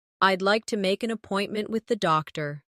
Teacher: Keep the stress on appointment so the listener understands the purpose.